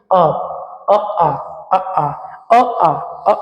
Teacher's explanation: कंठ से निकल कर ये आ रहा है इसलिए कंठ स्वर कह देंगे